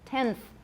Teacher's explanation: right tenth is a better example the n becomes interdental tenth my n is interdental